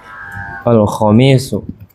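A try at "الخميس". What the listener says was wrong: Enggak, panjang pendeknya diulangi. Tadi dengarnya al-khamisu, pasir khamis itu.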